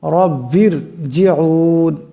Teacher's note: এ থেকে রাকে মোটা করে পড়তে হবে রব্বির জিউন এখানে দেখেন এ প্রথম যে রা আছে সেটার উপর জবর আছে এই রাকে মোটা আওয়াজে পড়তে হবে আবার এই ভা এই রাকে ধরবে আর রা সাকিন তার ডানে · আর রা সাকিন তার ডানে জের আসছে গতি থেকে এই রাকে পাতলা আওয়াজে পড়তে হবে